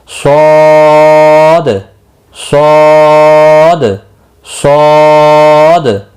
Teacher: صاد مستعلیہ ہے، پر پڑھا جائے گا یعنی موٹا پڑھا جائے گا ، اور 3 سے 5 الف کے برابر کھینچ کر پڑھیں